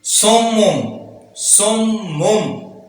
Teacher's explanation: नून तनवीन है, उसके बाद बा है तो नून तनवीन को कन्वर्ट कर रहे हैं मीम में